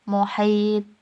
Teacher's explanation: Muhitun dibaca muhit. Huruf to dibaca sukun dan memantul. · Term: qalqalah kubro